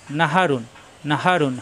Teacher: হা মুখ খোলা থাকবে কণ্ঠনালী শুরু থেকে